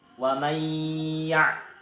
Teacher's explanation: dibaca masuk dengan dengung dan ditahan selama 3 harokat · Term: idgham bi gunnah